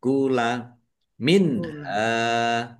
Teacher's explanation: nun sukun bertemu dengan huruf ha bacaan izhar. Izhar khalqi dibaca jelas. Ha fathah alif mad thobi'i panjang dua harakat.